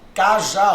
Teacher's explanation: A sílaba tônica é a última. Percebeu? Oxítona.